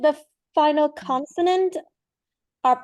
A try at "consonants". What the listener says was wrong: consonants. You don't use your S sound enough. Have you noticed that? Because you said the final consonant R, and it should have been consonants